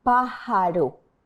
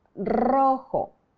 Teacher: The R sound is softer than in the word rojo, and this is because it's placed in the middle of the word.